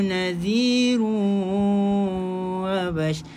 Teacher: Nadhirun masukkan dekat waw idgham ma'al gunnah